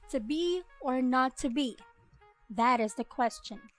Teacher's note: the extra unstressed syllable at the end of the line though not common is still a possible variation in iambic line